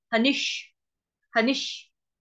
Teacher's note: हनिष्ये, हनि, ह पूरा, न पूरा, न के साथ है छोटी की मात्रा। नी के ऊपर आघात आ रहा है आधे श, षटकोण वाले आधे श का